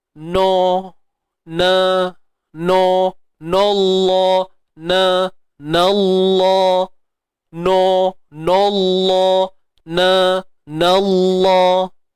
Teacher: Pastikan bunyi na tu, jangan bunyi no.